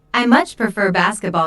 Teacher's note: notice how much is stressed to show that the speaker really likes basketball